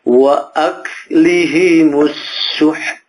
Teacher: ada S-nya gitu loh. Seperti ada desisannya, ada nafas yang keluar.